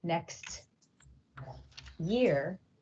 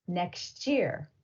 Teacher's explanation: When two separate sounds merge to form a new different sound. Sometimes a final t sound in a word and an initial y sound in the following word combine to make a ch sound at the boundary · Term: coalescence